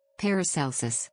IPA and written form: ˌpærəˈsɛlsəs (Paracelsus)